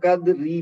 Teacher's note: اب میں نے ملا کے پڑھا ہے تو قدری پڑھا ہے یعنی را کو باریک پڑھا ہے, لیکن اگر میں کہہ دوں انا انزلناہ فی لیلۃ القدر تو اب را موٹی پڑی جائے گی کیونکہ میں وہاں رک گیا ہوں.